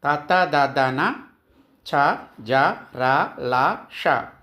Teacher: దంత్యములు అంటే దంతముల నుండి పుట్టినవి